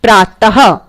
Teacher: बिंदु जब लगाते हैं तो इसे हम विसर्ग बोलते हैं और विसर्ग को बोलने में हक़ की आवाज़ आती है